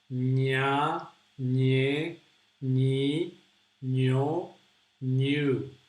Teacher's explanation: So it's like pronouncing an N, na, ne, but putting your tongue, sticking your tongue to the top, and it's a very nasal sound